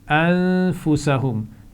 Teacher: انفسہم نون پر غنہ ہوگا